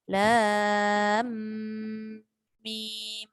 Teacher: Lam bertemu mim. Lam mim. Dia didengung kat situ. Maka dia jadi idgham.